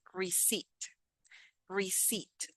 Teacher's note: I noticed that in the word receipt, we don't pronounce this P. We say receipt, receipt.